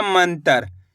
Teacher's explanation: माँ के ऊपर बिंदी लगी हुई है, तो इस बिंदी का उच्चारण आधा ना के रूप में करेंगे। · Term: अनुस्वार की मात्रा